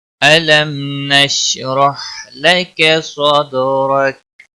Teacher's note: دال ساکن پر کلکلا ہوگا، اور را زبر کی وجہ سے موٹا پڑا جائے گا، کا کو کھینچنا نہیں، وقف کی صورت میں کاف ساکن ہوگا۔